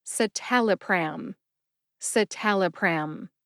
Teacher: Emphasize the second syllable, tal. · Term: emphasis